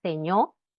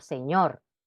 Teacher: pérdida de la r en posición final de palabra decir seño por señor